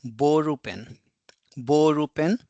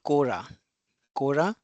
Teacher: L and r are perceived as an r. So ball pen will be borup pen.